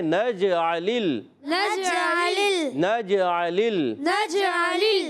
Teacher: عین پر زبر ہے، عین کی زبر کو کھینچیں گے نہیں، لام سے ملائیں گے، دوسرا لام ساکن ہے، ہلائیں گے نہیں